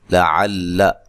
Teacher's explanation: عین کو واضح نکالنا ہے، لمبا لام کو لمبا نہیں کرنا، موٹا بھی نہیں کرنا اس لام کو بھی